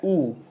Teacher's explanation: होठ गोल हो गए, वृत्ताकार हो गए, गोलाकार हो गए, तो यहां हो जाएगा वृत्तमुखी।